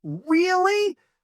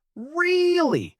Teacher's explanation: That high sound shows you are surprised and excited.